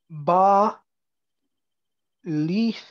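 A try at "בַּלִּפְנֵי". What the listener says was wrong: No, it's Badlifne, because this is a herik. This is a short vowel. So that means this Shava is silent. So Lifne.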